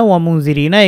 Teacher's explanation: এটি ইকফা গুন্না, গুন্নাটা পাতলা হবে কারণ জাল হরফটির কারণে গুন্না হয়েছে। জাল যেহেতু পাতলা হরফ, মাখরাজটাও জিব্বার আগায় এবং গুন্নাটাও পাতলা হবে।